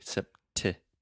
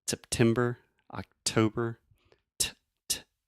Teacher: I'm really aspirating, which means I'm breathing air out of my mouth and going t, making that pop sound. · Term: true T